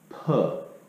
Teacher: instead of your tongue going against the top of your mouth, when you make the P sound, P, Your lips are closing together. So when you make the hard consonant sound, you're gonna tighten your lips together so that you create a buildup of pressure.